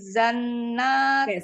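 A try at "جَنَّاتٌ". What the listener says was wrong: stop. Jangan zan. Janna.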